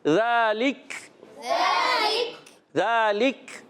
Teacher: کاف شدیدہ محموسہ حرف ہے، سختی کے ساتھ آواز بند ہوتی ہے، پستی نرمی سے سانس جاری رہتا ہے